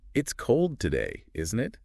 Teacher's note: my voice goes up at the end on that, isn't it? It sounds more like I'm genuinely asking for your opinion. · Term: tag questions